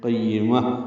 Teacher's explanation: قیمہ، یا کو جلدی پڑھیں گے، میم کو تائے مربوطہ سے ملا دیں گے، وقفاً یہ ہا میں تبدیل ہو جائے گی. قیمہ، اور اس پہ ہمس ہوگا.